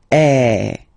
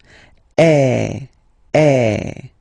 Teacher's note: So it's really open. I mean, the sound is really open, and normally your mouth should be opened a little bit more than with the accent aigu as well. Okay, so it goes like eh. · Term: accent grave